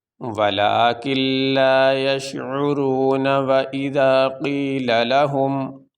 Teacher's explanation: ہم دونوں آیتوں کو ملا کے پڑھ رہے ہیں تو نون کے اوپر زبر پڑھا جا رہا ہے۔